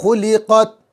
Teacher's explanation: بڑا قاف نکالیں گے، خا نکالیں گے گلے سے